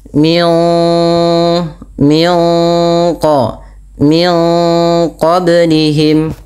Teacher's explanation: Min qa min qablihim, yang dimana suara nunnya disamarkan kepada makhraj daripada huruf qaf yang berada di pangkal lidah kita. Kemudian pada lafal qablihim ada bacaan qalqalah yang dimana huruf ba-nya wajib kita pantulkan.